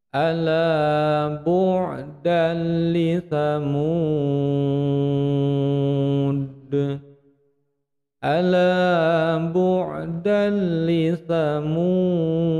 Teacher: Mad arid disukun sekaligus ujungnya qalqala kubra, karena huruf dal yang disukun di ujung bacaan maka memantul besar